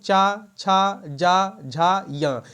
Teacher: च वर्ग ध्वनियां किस वर्ग में आती है तो ताल में आती हैं